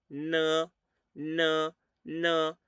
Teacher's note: La N es un sonido muy parecido al español, pero muy más nasal.